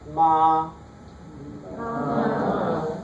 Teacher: See, it's very high. The pitch is very high, right? It's flat.